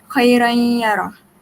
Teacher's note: Sebab tanwin ni dengan huruf ya ni dia ada persamaan makhraj dia. Jadi kita kena baca dengan dengung.